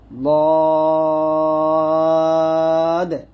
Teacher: তবে সাবধান থাকবেন লদ উচ্চারণ করার সময় জিহ্বার আগা গোলা যেন আমাদের যে সিঙ্গেল দাঁতগুলো আছে ওই দাঁতের সাথে টাচ না করে, মারি দাঁতের গোড়ার সঙ্গে লাগবে জিহ্বার গোড়াটা, লদ, এরকম ভাবে।